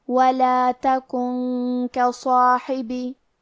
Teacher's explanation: کاف حروف الاخفاء میں سے ہے اور اخفاء کا معنی ہے چھپا دینا، تو ہم نون ساکن کو چھپاتے ہوئے اور غنہ کے ساتھ یہ حکم کو ادا کریں گے